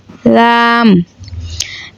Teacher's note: জিহ্বার আগার কিনারা সামনের উপরের দাঁতের মাড়ির সঙ্গে লাগাইয়া লাম